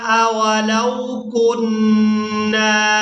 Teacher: نون مشدد پر غنہ کریں گے اور نون کو جب دوسری بار ادا کریں گے تو اس کو الف مدہ کی وجہ سے کھینچ کر ادا کیا جائے گا